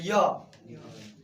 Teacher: मैं लगता है कि स्पर्श हो रहा है परंतु ऐसा, जैसे बोले य, लगता है जीभ तालु में स्पर्श करने वाली है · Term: अंतस्थ व्यंजन